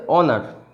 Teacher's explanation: যতই এইচ থাকুক না কেন, এইচটা অ এর উচ্চারণ নিচ্ছে, হয়ের উচ্চারণ নিচ্ছে না। এটা উচ্চারণ কখনই হনার এটা হবে না।